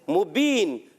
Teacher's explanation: मीम पर पेश आने की वजह से होंठों की अदायगी होंठ गोल करके अदा करेंगे